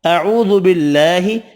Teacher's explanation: اعوذ باللہ، واو مدہ ایک الف کی مقدار میں کھینچ کر پڑھیں گے، اللہ کا نام والا لام زیر کی وجہ سے باریک پڑھنا ہے